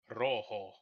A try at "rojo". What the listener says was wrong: You got to roll the R. Rojo.